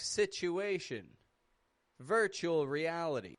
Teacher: I've spoken about something very similar in the past. how T and U in the middle of a word can be blended together to make like a ch sound